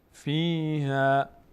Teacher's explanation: ها پر خوانده نمیشه، فتح بعدش الف صدای آ میگیره